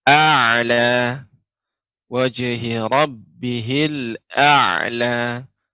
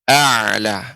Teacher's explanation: untuk huruf ain ya, ketika disukunkan dia lebih memanjang. A'la ya.